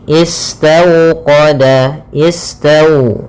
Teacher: Kemudian pada lafal tau di sini ada bacaan lin. Bacaan lin yaitu suaranya adalah lembut pada lafal waw sukunnya. Istawqada, istau dengan dimonyongkan bibirnya.